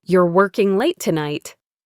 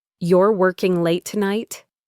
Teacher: My voice went up. That was a question. I'm asking for confirmation.